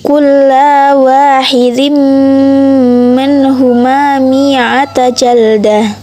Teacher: Idgham bi gunnah sebab tanwin bertemu huruf mim jadi dibaca dengung